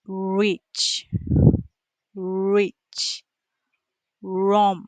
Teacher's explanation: the lips come forward like you are going to kiss and the tongue goes back in the mouth. It does not touch anything. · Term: R sound